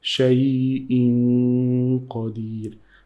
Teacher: When you see the tanween like this one on the hamza before qaf, you have to know that there is a sound of the noon which is in tanween. You need to hide into the qaf.